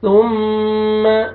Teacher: ثم سا، سامنے والے جو 2 دانت ہیں ان کے نیچے آپ نے زبان کو ہلکا سا ٹچ کرنا ہے. ثم میم مشدد غنہ کریں گے، نوز میں ساؤنڈ لے کے جائیں گے